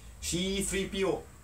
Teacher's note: C-3PO has that C sound in English, which they can't do in Japanese. So it's changed to shi.